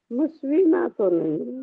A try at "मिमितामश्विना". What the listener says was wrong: श है ना, आधा श है ना, वह पर ई की मात्रा। स्वस्ति नो मिमितामश्विना।